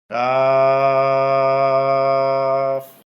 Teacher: কফ কাফ এই হরফটি বলতে 4 আলিফ পরিমাণ লম্বা হবে, জিহ্বার গোড়ার একটু আগে তালুতে লাগবে, স্বাভাবিক উচ্চারণ হবে, শেষে উপরের দাঁতের আগে নিচের ঠোঁটে লাগিয়ে যাবে।